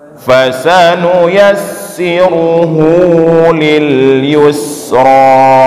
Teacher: sin juga jangan kita tebalkan, dia huruf tipis